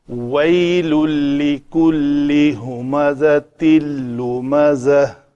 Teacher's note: ویل لکل، ویلن تھا، تنوین کے بعد چونکہ لام آیا ہے تو اسے ادغام کامل کریں گے۔ تنوین کا نون سننے میں باقی نہیں رہنا چاہیے، چونکہ اس کے بعد لام اور را آ جائیں، ان دو صورتوں میں تنوین کا ادغام کامل ہوتا ہے۔